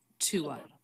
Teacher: So in order to link smoothly, but have us know, have us hear that as two separate words, we don't reduce the vowel when it's followed by a schwa